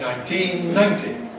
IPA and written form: ˌnaɪnˈtiːn ˈnaɪnti (nineteen ninety)